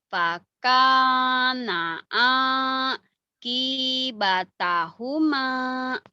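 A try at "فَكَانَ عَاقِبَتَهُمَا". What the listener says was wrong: Sudah benar hurufnya, cuman penekannya belum benar. Ulang lagi, belum beres. Q-nya pendek. Yang panjang mana saya tanya sekarang. Mana yang panjang? K, A, sama mim. Ayo, tekan yang tiga aja. Faka, faka, fakana akibatahuma. Faka, fakana akibatahuma.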